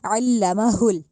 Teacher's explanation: अब ये हलक वाली साइड से हा जो है वो अदा नहीं होगा, वो हमारा ये वाला हा हमारे सीने वाली साइड से अदा होगा